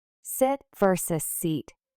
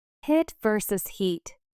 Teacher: For the long e sound, your mouth is more tense and the sound is longer.